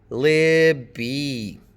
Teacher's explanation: The stress is on the first syllable. Libby. The vowel in the first syllable is obviously longer, so you can put a colon after it to indicate that it's longer.